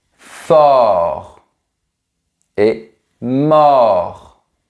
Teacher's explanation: On a aussi le son plus ouvert. O, comme dans les mots porte, fort et mort.